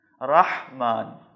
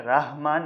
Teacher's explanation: رحمان میں جو ہا ہے وہ یہی حلوے والی ہا ہے جو حلق کے درمیان سے ادا ہوگی۔ رحمان، اس کو آپ نے ہے کی طرح دو چشمی ہے یا گول ہے کی طرح نہیں پڑھنا ہے، رحمان نہیں پڑھنا ہے، رحمان۔